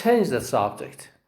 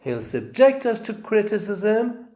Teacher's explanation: the stress is on the second syllable and it's a verb